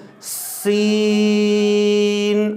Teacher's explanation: اس کے بعد ہے دیکھیں سین۔ سین حروف صفیریہ میں سے ہے باریک سیٹی کے ساتھ۔ جس طرح اکثر ہم بڑی گاڑیوں کے اندر سفر کرتے ہیں تو آواز آتی ہے نا، جب دروازہ کھولتے ہیں تو یعنی کہ پہلے تیز ہوتی ہے آواز، اس کے بعد کم ہوتی ہے۔ · جب بھی سین ادا کرنا ہے باریک سیٹی کے ساتھ ادا کرنا ہے، یعنی سین، اور اس کو پورا 3 الف لمبا کرنا ہے۔ یہاں پہ اس چیز کا خیال کرنا ہے کہ سین 3 حروف کا مجموعہ ہے، سین یا نون کا۔